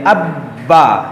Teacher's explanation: یہ حروف قلقلہ ہے، اس کو ہم جماؤ کے ساتھ ادا کریں گے